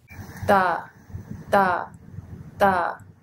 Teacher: Okay, so in these sounds, you're using the tip of your tongue and you're touching what we call the alveolar ridge. So in da and na, you're touching maybe the alveolar ridge or slightly in front of it, just behind your teeth